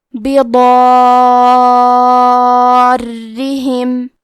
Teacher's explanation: حرف را کو 2 حرف کے برابر پڑھیں گے کیونکہ اس پہ تشدید ہے، اور کیونکہ تشدید زیر کا ہے تو ہمیں را کو پتلی آواز میں بھی پڑھنا ہے · کلمت بضارہم میں حرف الضاد کی ادائیگی زبان کے کروٹ اور اوپر کے داڑھوں کے جڑ سے ہے، ضاد حروف تفخیم میں سے ہے، تو ہم یہ حرف کو موٹی آواز میں پڑھیں گے کیونکہ اس کے بعد مد الف ہے، تو ہمیں مد الف کو بھی تفخیم سے ادا کرنا ہے۔